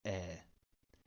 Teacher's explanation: on that part of the word when it is a grav it makes an open mid-front unrounded vowel